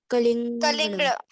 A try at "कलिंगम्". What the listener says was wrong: नहीं, कलिंगम, कलिंगम बोलिए, अड़ा नहीं बोलने का, कलिंगम बोलिए।